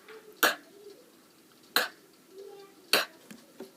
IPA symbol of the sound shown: k